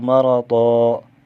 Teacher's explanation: تنوین کو وقفی صورت میں ایک الف پر بدل کر پڑھیں گے